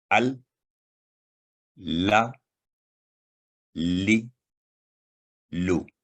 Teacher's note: تو یہ بھی حروف لسانیہ میں سے ہے۔ زبان کی نوک کا اوپر والا حصہ مسوڑوں کے قریب اوپر تالو کے ساتھ سخت حصہ پر لگانے سے ادا ہوتا ہے